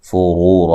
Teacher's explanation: را کو موٹا ادا کرنا ہے، اور یہ واو مدہ ہے۔